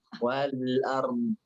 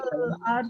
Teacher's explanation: menekan tapi tidak diucapkan vokalnya.